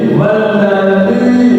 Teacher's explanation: Wal lam tasdid dibaca nabir, ditinggikan dan ditekan. Wal ditinggikan ditekan tahan. Walladzi ujung lidah menyentuh ujung gigi seri atas.